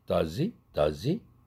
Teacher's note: 이렇게 의문문으로 시작할 때 h 날아가죠